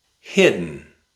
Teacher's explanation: Hit, mm, hit, mm, hit, mm, hidden, hidden. We replaced the letter D and the letter E with a glottal stop.